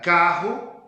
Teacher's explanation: E nós vamos ter a glotização do re